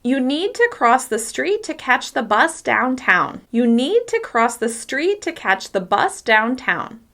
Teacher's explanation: the words that are stressed: need, cross, street, catch, bus, downtown